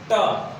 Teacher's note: हमारी जीव ऊपर उठती है और झटके के साथ नीचे गिरती है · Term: मूर्धन्य